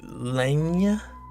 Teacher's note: they are palatalized so they make like essentially the Y sound